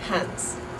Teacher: So in a word like hands, like I have two hands, we have the voiced D, hand, so you turn the S into a Z, hands. So a Dutch person might say hands as hands, with that S at the end, almost like a TS